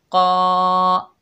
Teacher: क़ाफ जो है हुरूफ़ मुस्ताला में से है तो हम इसको मोटा पढ़ेंगे।